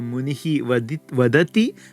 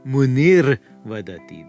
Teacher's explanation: If the start of the second word is a voiced consonant or any vowel, then a kind of unique situation happens in the Visarga Sandhi world. The Visarga turns not into an S, but into an R, a rakara, and then the words get joined together. So munihi vadati becomes munir vadati, the sage says.